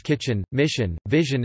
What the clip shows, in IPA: tʃ ʃ ʒ